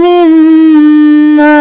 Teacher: गुन्ना हो रहा है दोनों मीम पे